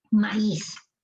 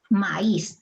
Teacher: Aquí está la fuerza de voz en is. Maíz. Esta es una palabra aguda. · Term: hiato acentual